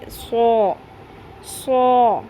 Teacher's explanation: اس کو سوا نہیں پڑھنا، واو کی ساؤنڈ نہیں آنی چاہیے. سو سو یعنی کہ ہلکا سا ہونٹوں کو گول رکھیں گے، بہت زیادہ موڑ نہیں دینا، سرکل نہیں بنا دینا ہونٹوں کا.